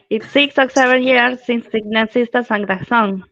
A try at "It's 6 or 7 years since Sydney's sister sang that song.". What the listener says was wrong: Be careful with the th sound there in the middle.